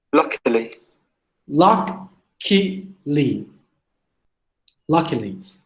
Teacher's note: The stress in the first syllable.